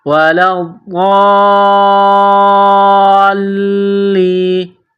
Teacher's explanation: لام ضاد الف لام مد، زبر ضال، لام یا زیر لی، ولا الضالین۔ غاد اور لام کو دبائیں گے تشدید کی وجہ سے